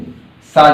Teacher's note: सघोष का उल्टा अघोष, यानी कि ये सा जो है वो अघोष में आएगा